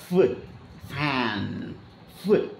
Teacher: கீழ இருக்கக்கூடிய உதடு மேல் வந்து நின்று அந்த ஏர் வந்து அப்படியே பிரிக்ஷன் ஆகி அப்படியே வெளியில போகும் உராய்வு நிலையில் அப்ப ஃபுன் ஃபு அப்படின்னு சொன்னீங்கன்னா அந்த காத்து வந்து பாத்தீங்கன்னா · அப்போ ஃபேன் அப்படின்னு சொன்னீங்கன்னா அந்த காற்று வந்து பார்த்திங்கன்னா அந்த பல் வந்து மேல் வரிசை பல் கீழ் உதடின் மீது தொடும், காற்று ரொம்ப கஷ்டப்பட்டு வெளியில் போகும் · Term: லேபியோ டென்டல்